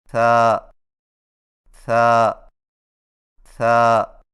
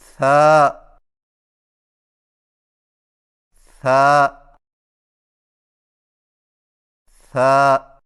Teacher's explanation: زبان کی نوک کو ثنایا علیہ کے اندرونی کناروں سے نرمی سے لگا کر باریک آواز میں پڑھیں، یعنی ث ث ث، اور یاد رکھیں کہ سامنے والے اوپر کے دو دانتوں کو ثنایا علیہ کہتے ہیں۔